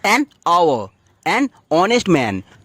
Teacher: এইচটা উচ্চারণ হচ্ছে না, তো তার জন্য ভাওয়েলের মতো সাউন্ড করছে